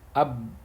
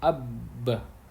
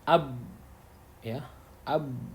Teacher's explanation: Maka kita akan menemukan bahwa Makhraj ba itu ada pada dua bibir.